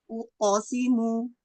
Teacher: jadi pantulan qafnya tetap tebal ya, jangan uqo, jangan terbuka suaranya ke depan, jangan uqasimu, tapi uqasimu tetap tetap ke atas.